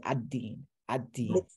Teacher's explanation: That's and you see that dal is doubled. So dal is another letter like the ra and the lam, where instead of saying al-din, you say ad-din. Ad-din. The lam merged into the dal.